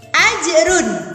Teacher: ada hukum bacaan qalqalah sehingga ada pantulan sedikit, tapi pantulannya tipis.